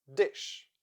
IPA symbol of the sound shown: ʃ